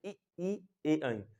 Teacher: जीभ जो है बिल्कुल एकदम आगे से सटी हुई है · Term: अग्र भाग